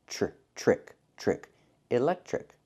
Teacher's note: The tr makes the ch sound like in chicken plus the r. Trick trick.